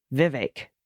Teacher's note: Vivek Rhymes more with bake than heck Vivek all right and there's an equal emphasis on both syllables this is a general rule of thumb in many Indian names